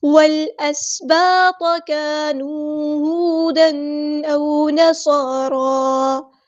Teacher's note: واو کو لام کے ساتھ ملا دیں گے. حمزہ الوصل ہمارا ڈراپ ہو جائے گا. لام یہاں پر لام قمری ہے, اس کو ہم ظاہر کریں گے.